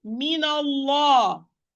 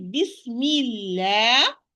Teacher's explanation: While if I say Bismillah, the lam of Allah is going to be light because it's preceded by kasra, and the natural mad alif, which is following the lam, is going to be light.